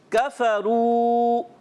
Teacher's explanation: کاف باریک رکھیں گے، رو واو مدہ ایک الف کھینچیں گے